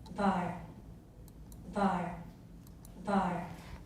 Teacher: They're putting the breathiness on the consonant.